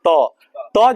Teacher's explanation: तो वो दंत कहलाएगा क्या कहलाएगा दंत जैसे कहिए त त जब कहिए ना तो जीभ जाके मारेगा किसमें दांत में बिना दांत में मारे छोड़ेगा नहीं